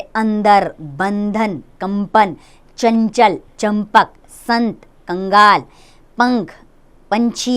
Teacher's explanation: तो सबसे पहले जानेंगे हम अनुस्वार यानी अंग के बारे में, जो बिंदु के रूप में दर्शाया जाता है। अनुस्वार का अर्थ है स्वर के बाद आने वाली नासिक्य ध्वनि, अर्थात इसका उच्चारण नाक से होता है। इसके बाद सदैव कोई व्यंजन आता है।